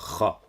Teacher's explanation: Ou encore à écrire la lettre Kha avec un H en gras, mais avec un accent circonflexe à l'envers, car c'est la même lettre que le Ha, mais en raclant la gorge pour faire Kha.